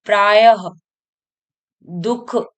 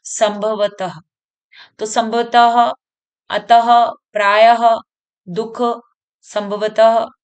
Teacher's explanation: तो यह ह का स्वर निकल रहा है इसमें और मतलब जो उच्चारण में ध्वनि हमें सुनाई दे रही है वो ह के समान सुनाई दे रही है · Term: विसर्ग